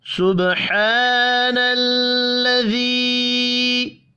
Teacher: سب با ساکن ہے، قلقلہ کریں گے